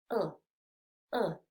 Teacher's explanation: este sonido es menos redondeado, es decir, la boca la vas a poner menos redondeada y vas a abrir un poquito más la boca, ¿sí? Lo que significa que el sonido está un poquito más relajado, se produce un poquito más en el centro de la boca, no es tan atrás.